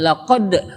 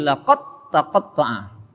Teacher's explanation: Laqad taqatta'a, tidak laqad, tidak dikolkolahkan karena dal dan ta memiliki sifat huruf yang sama-sama berada di ujung lidah, dal, ta, sehingga dal di sini tidak dikolkolahkan, tidak laqad tapi laqad taqatta'a.